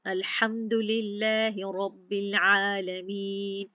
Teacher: जब हम पढ़ते हैं बिस्मिल्लाह तो इसमें लाम का लाम अल्लाह सुब्हानहू तआला, इसमें जो लाम पढ़ा जा रहा है मोटा नहीं पढ़ा जा रहा, बारीक पढ़ा जा रहा है। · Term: लाम बारीक